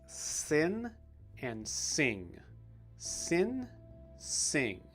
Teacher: the i sound is just a little bit different because of the sounds that come after it whether it's just the normal n sound or it's the deeper ng sound